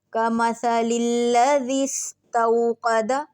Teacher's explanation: سین میں دیکھیں ہم نے سیٹی کی آواز لے کر آنی ہے